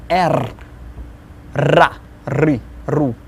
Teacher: It's kind of trilling, rolling